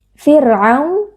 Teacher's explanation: terdapat bacaan liin karena ada wau sukun yang sebelumnya berharakat fathah dibaca dengan lunak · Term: bacaan lin